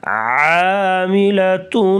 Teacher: عین کو تھوڑا سا لمبا کریں گے، گلے سے آواز نکالیں گے